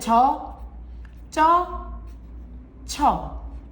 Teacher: 어로 발음해줘야 된다. 단모음으로 발음해줘야 돼.